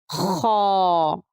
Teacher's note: خا کو صحیح اور موٹا ادا کرنے کا طریقہ یہ ہے کہ منہ کا مضبوطی سے دائرہ بنائیں اور آواز کو خا کے مخرج میں اوپر کی طرف اٹھائیں تو خا موٹا ادا ہوگا۔ خا میں خرخر کی آواز باقی رہنی چاہیے